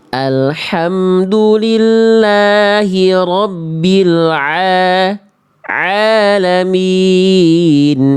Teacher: Saya sering mengibaratkan kalau ain itu sama hamzah, ain itu lebih ngeden.